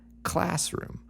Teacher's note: so we put the stress on that first element class